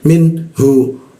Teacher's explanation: Minhu, min nun di bawah hidung, hu tenggorokan bagian bawah. Minhu masuk ke mim.